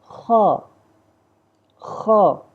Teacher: دوسری جو نقطے والی خوا ہے وہ جو ہے ہمارے منہ کی طرف والا جو حصہ ہے حلق کا, وہاں سے ادا ہوتی ہے اپر تھروٹ سے